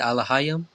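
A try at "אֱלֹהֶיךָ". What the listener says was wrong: Alahaya, and then the last word, the last letter. This one right here is a ka at the end of a word. Alahayaka, which again means your power, right? So we have Alahayaka.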